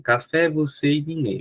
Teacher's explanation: Todas essas palavras só tem duas sílabas e além disso, a sílaba tônica é a última. Então, todas são oxítonas e de sílabas.